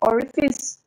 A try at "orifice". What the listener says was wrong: L is not there. From where L is coming?